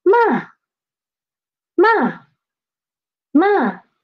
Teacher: It started at the highest pitch and it rapidly dropped to pitch 1, pitch 1. So it's like ma, ma, ma. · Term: fourth tone